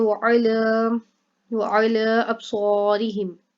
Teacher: عین کو حلق سے نکالا جائے گا، لام کو لمبا کیا جائے گا، ایک تو یہاں پر کھڑا زبر آ گیا اور دوسرا یہاں پہ مدہ آ گئی، مد منفصل.